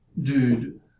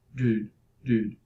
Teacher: The tongue tip is in the alveolar region for D, and then it has to go back for the production of oo, and then again forward for the following D. So it really doesn't have so much time to move between such extreme positions. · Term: barred oo